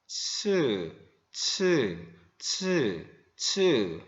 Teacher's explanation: 처음에는 이게 터지는 듯 하다가 비벼져요. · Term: 파찰음